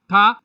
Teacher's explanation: दंत से आता है महाप्राण होता है अघोष व्यंजन होता है